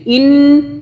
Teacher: نون کی 2 مرتبہ آواز آئے گی تشدید کی وجہ سے. ایک نون پچھلے والے حمزہ سے ملے گا ساکن آواز کے ساتھ یعنی چھپی ہوئی آواز کے ساتھ، اور دوسرا نون اوپر زبر کے ساتھ.